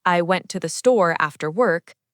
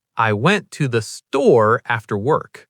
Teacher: >> So instead of saying, I went to the store after work, like every word matters equally, >> you might naturally stress store and work.